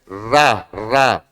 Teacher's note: जीभ क्या होती है, लुंठित होती है, ऊपर तालु से टकराकर नीचे की तरफ आती है, तो जीभ का क्या होता है, लुंठित होती है।